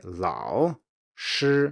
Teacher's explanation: when slowing it down and almost making it into two distinct syllables, some teachers will change the first tone to a dipping tone